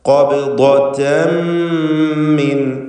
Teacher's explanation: തൻവീനിന് ശേഷമുള്ള മീമിൽ പൂർണ്ണമായും ലയിപ്പിച്ച് മണിക്കണം. ഇദ്ഗാം ബിഗുന്ന കാമിൽ.